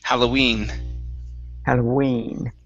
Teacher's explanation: the stress is on the end of the word Halloween